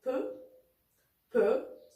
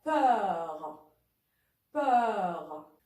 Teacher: Le E fermé, comme dans peu, peu. Le E ouvert, comme dans peur, peur.